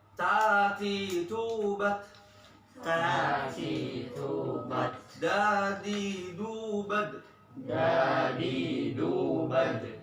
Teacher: Sekarang yang ta, dal sama to. Punggung ujung lidah pada posisi pangkal 2 gigi seri atas.